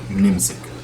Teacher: the present tense conjugation for ahna, for us, often the B is not a B, and instead it's an M.